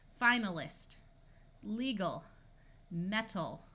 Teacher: We can add suffixes and the AL retains the muffled schwa sound